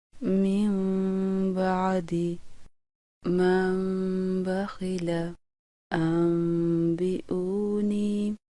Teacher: چھوٹی میم پر غنہ کرنے کا طریقہ: ہونٹوں کے اندرونی خشک حصوں کو آپس میں نہایت نرمی سے ملا کر آواز کو ناک کی جڑ سے ایک الف کی مقدار کے برابر جاری رکھ کر با کو ہونٹوں کی سختی سے ادا کیا جاتا ہے، جیسے من بعدی من بخل انبئونی۔ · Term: اقلاب